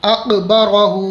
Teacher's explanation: یہاں قاف کو پر کرنا ہے اور را کو پر کرنا ہے، یعنی موٹا کر کے پڑھنا ہے